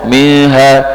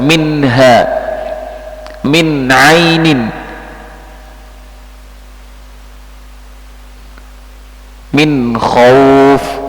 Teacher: Jadi ketika ketemu alif hamzah ha minha, minha nunnya ini jelas, tidak dibaca dengung, minha, jadi jelas, minha, min ainin, min khauf, dan yang lainnya. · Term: izhar